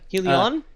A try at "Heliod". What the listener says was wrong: Heliod. With a D.